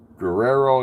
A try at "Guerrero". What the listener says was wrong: It's not Guerrero. Yeah, when you have two R's, you roll it. roll the R,